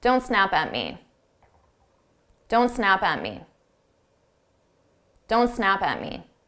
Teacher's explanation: I take that P from SNAP and I also add it to AT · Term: combine our sounds together